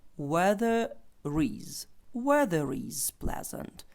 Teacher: ненаголошеній позиції не читає буква р не чується не читається але якщо наступне Слово починається на голосну то тоді ця ри чується і вона ніби як чіпляється до того наступного слова яке починається на голосну тому це буде weather is weather is pleasant погода приємна the